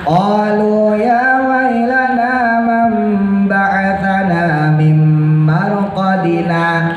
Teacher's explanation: sakta berhenti sebentar tanpa napas, lalu kembali membaca